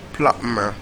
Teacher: The B in plumber is silent.